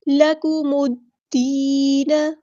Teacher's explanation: الف کے برابر لمبا کریں گے، لکم الدین، یہاں پہ دیکھیں میم کو ہم نے دال کے ساتھ ملا دینا ہے، حمزۃ الوصل ہمارا ڈراپ ہو جائے گا · ساتھ ملا دینا ہے، حمزۃ الوصل ہمارا ڈراپ ہو جائے گا، لام یہاں پر لام شمسیہ ہے، اس کو ہم ادا نہیں کریں گے